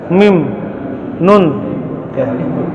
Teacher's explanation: Setiap kita menyebutkan huruf mim dan huruf nun, maka Bapak wajib mendorong udara ke rongga hidung. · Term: huruf gunnah